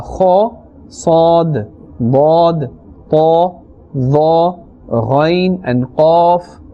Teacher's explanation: 7 letters which must always be pronounced with a thicker voice, a fuller voice, or a fuller sound. And these 7 letters are called musta'aliya letters.